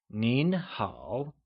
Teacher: a formal hello translates to nin hao, with a mid-rising tone on nin and a falling rising tone on hao